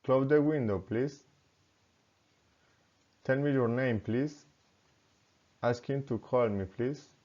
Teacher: asking for help requests rising intonation